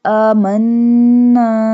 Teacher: do gunna on noon because it has a tashdid